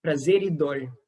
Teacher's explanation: the fact that this r is between two vowels, it makes it a r, a tap. So prazer e dor instead of prazer e dor. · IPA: /ɾ/